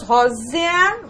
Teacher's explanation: o E com pronúncia menor aí da vogal, então nós temos também semivogal